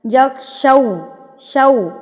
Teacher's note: واو سے پہلے زبر، یا سے پہلے زبر، وہ لین بن جاتے ہیں. لین کا مطلب ہوتا ہے آپ نے اس کو لمبا کر کے نہیں پڑھنا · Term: واو لین